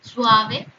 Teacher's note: U es vocal cerrada, átona con una vocal abierta A. Por lo tanto, esto sí forma un diptongo.